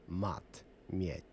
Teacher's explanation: If one is standing next to an ah, it sounds normal to us. But when followed by yah, it's forced to sound soft. It's palatalized.